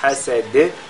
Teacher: à la fin on fait al-qalqala sur la lettre dal